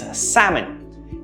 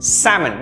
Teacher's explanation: Notice the absence of L. It's sam pronounced and N which is milder and softer.